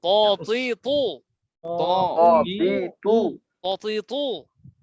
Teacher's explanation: বাংলায় ত। এ ত এর নিচে ব দিলে যেরকম ভারী হয়, মোটা হয়, এরকম মোটা আওয়াজে ত।